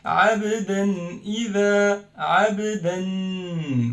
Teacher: we pronounce the noon of tanween clearly. That's why it's pronounced as this, as if there is noon. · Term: clear noon